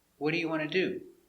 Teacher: for an information question the intonation goes down at the end